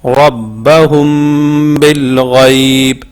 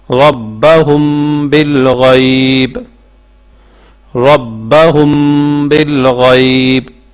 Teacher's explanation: تو یہ اخفاء شفوی کی مثال دیکھیں، جیسے یہ دیکھیں میم ساکن ہے اور میم ساکن کے بعد با ہے، تو اس کو جو میم ساکن ہے میم ساکن کو اس کے مخرج میں چھپا کر پڑھیں گے، ٹھیک ہے۔ اس کو زیادہ زور سے بھی نہیں پڑھیں گے، اس کو بالکل اس کے اندر چھپا کے پڑھیں گے۔